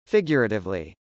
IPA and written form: fɪgjˈʊrətɪvli (figuratively)